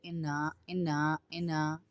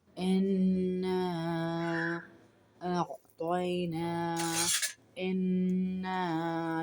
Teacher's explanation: اوپر مد ڈلا ہوا ہے، چھوٹا مد جس کو 3 انگلیوں کے برابر کھینچتے ہیں